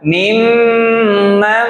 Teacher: Selanjutnya mimam, dua-duanya berdengung. Mimam, jangan keburu-buru dan konsisten.